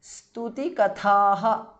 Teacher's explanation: the last tha is mahapranah